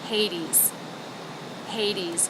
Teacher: stress on the first syllable so that should have more shape whereas these D D should be flatter and lower in Pitch